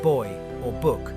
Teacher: This is the voiced version of a bilabial stop